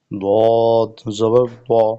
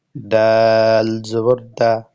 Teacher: দদ শক্ত করে মোটা করে ধরে, আর দাল হবে মোতাওয়াসিতা বা মাঝামাঝি কণ্ঠস্বরে